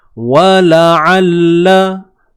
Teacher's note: Huruf ain sempitkan tengah kerongkong kita.